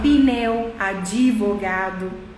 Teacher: Então você coloca um I ou um E para conseguir fazer essa sílaba, essa palavra funcionar, sem perceber.